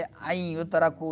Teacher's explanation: نون ساکن کے بعد یا آ رہا ہے حروف ادغام میں سے، تو کیا ہوگا؟ ادغام مال غنہ ہوگا